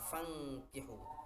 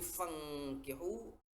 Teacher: Nun sukun bertemu dengan kaf. Itu wajib dibaca dengung, nama hukumnya ikhfa.